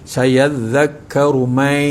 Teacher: daripada bunyi man jadi may, memasukkan bunyi nun mati pada huruf ya. Hukum dia idgham ma'al gunnah.